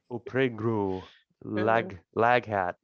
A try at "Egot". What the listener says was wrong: It's an I. It's not an L.